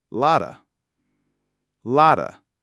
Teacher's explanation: This is one of the most common phrases in English, and it's almost always reduced and linked. Lot of becomes lotta. Lotta with a flap T. And the whole thing flows together.